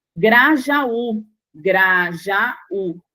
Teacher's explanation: Está separando o A do U. Você tem aí um hiato. Então, dá monossílaba, uma sílaba só.